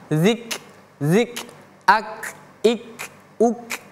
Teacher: Kalau huruf kaf ya, huruf k ini kalau dia sukun atau dia mati ada suara desis yang keluar